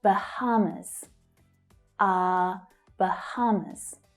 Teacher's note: So the stress is on the second syllable there.